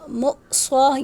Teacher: یہاں حمزہ کو جھٹکے سے پڑھیں گے کیونکہ حمزہ ساکن ہے